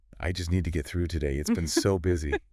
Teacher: the intonation would likely be a little lower, perhaps with a slight sigh implied